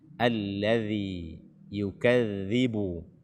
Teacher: makhraj daripada huruf dzal ini adalah ujung lidah bersentuhan dengan ujung gigi seri atas kita